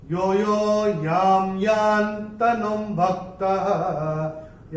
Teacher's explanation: न के ऊपर अनुस्वार जो आ रहा है पहले चरण में, उसके बाद का अक्षर है भ, और अनुस्वार के बाद जब भ आएगा तो अनुस्वार का उच्चारण होगा म